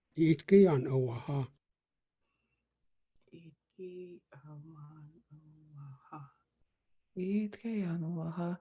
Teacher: I think I hear a high tone on the EE.